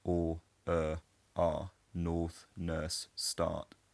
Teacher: Non-rhotic accents can work in a number of different ways, so I have a non-rhotic accent myself, but when I say words like north, nurse, and start that would historically have had a r sound in them, they're just monophthongs for me